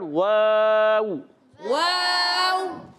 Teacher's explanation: वाव की अदायगी होठों की गोलाई से